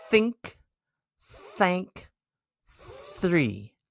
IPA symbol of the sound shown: θ